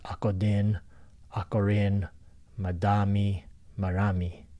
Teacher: in Philippine languages, you'll see that the D and the R is interchangeable